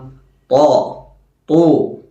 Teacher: അഥവാ തഫ്ഖീമാക്കി നാവിൻ്റെ മധ്യഭാഗം ഉയരുന്ന രൂപത്തിൽ, അഥവാ ഇസ്തിഅലാഇൻ്റെ അക്ഷരമാണ് ത്വാ.